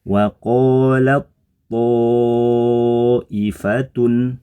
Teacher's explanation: idgham berarti tanya jadi masuk ke tho melebur ke tho ee bergabung ke huruf tho sehingga suaranya tidak nampak